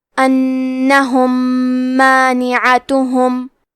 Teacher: یہاں حکم ہے ادغام متماثلین، تو ہم میم ساکن کو دوسرے میم میں ملا کے ایک ہی میم غنہ اور تشدید کے ساتھ پڑھیں گے